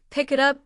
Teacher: with a K and I connecting seamlessly